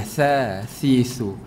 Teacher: Kena keluar lidah. Tempat keluar dia di antara 2 gigi tu keluar lidah.